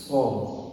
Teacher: Makhrajnya Bapak Ibu terletak di ujung lidah dengan gigi bawah seri bawah. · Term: shad